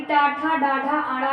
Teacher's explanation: टाठा, डाढ़ा, आड़ा ये किस तरह के वर्ण है, तो मूर्धन्य वर्ण है, क्योंकि इनका उच्चारण स्थान मूर्धा से होता है, यानी इनका उच्चारण मूर्धा से होता है।